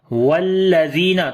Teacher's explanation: زال کو نرم پڑھیں گے، یا مدہ ہے یہاں پر لمبا کریں گے.